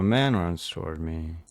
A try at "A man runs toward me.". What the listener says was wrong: Go lower pitch on me. We're getting there. I like it better, but I think we have to go lower on me. It's not man runs toward me. No, it's more man runs toward me. A man runs toward me.